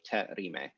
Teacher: it's just the te base plus a glottal stop